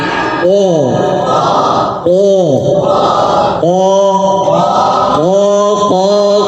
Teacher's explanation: dia keluar dari lisan dan dia paling pangkal lisan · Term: huruf q